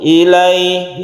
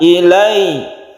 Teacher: Tidak biasa saja seperti sukun ya. Kalau sukun begini membacanya, ilai, tapi kalau tasydid lebih ditekan, ilai, anaba ilai. Jadi lebih ditekan ke huruf ya.